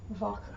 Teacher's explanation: the W is pronounced as a V in the German language most of the time, not 100% of the time.